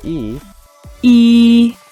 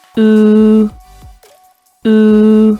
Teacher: they can be kept apart either flat as in the vowel sound /i:/ or rounded as in the vowel sound /u:/